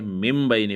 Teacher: اقلاب یا قلب کا معنی ہے بدلنا، یعنی نون ساکن اور تنوین کو میم سے بدل کر غنہ اور اخفاء کے ساتھ پڑھنا · اب یہاں پر انہوں نے یہ 4-5 مثالیں دی ہیں، تو ان سب کے اندر دیکھو، پہلے مثال کے اندر سنبلۃ، یہاں پر نون ساکن ہے، لیکن اس کے بعد جو ہے جبکہ با آیا ہے نا، نون ساکن کے بعد با آیا ہوا ہے، تو اس لیے ہم نون کو میم سے بدل دیں گے، سنبلۃ کے بجائے ہم سنبلۃ پڑھیں گے۔ · مم بین کے اندر بھی اس طرح نون ساکن ہے، اس کے بعد با آیا ہوا ہے، تو ہم جو ہے من کو میم کے، نون کو میم کے ساتھ بدل لیں گے، تو ہم من بین کے بجائے مم بین پڑھیں گے